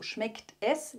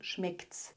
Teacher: dass das S mit dem Verb verschmolzen wird also schmeckt es wird zu schmeckt's das ist auch etwas ganz